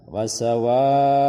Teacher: wawnya panjang 4 atau 5 harakat, wajib, namanya wajib muttasil, tidak boleh dibaca pendek. Jadi dibaca wasawa'un 5 harakat atau bisa 4 harakat.